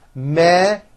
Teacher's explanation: Measurements has the voiced zh sound.